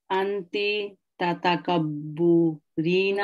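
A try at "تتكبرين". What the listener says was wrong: No, no, not u. Tata kabbarina.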